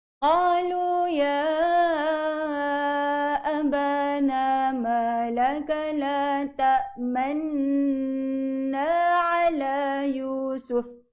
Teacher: Okey, bacaan Ishmam tadi dia kata ketika nak dengungkan nun itu perlu memuncungkan bibir